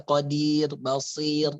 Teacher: Kalau qadir itu tipis ya. Qadir ra-nya ra tarkik. Qadir karena ra-nya sukun, kemudian sebelumnya harakatnya kasrah.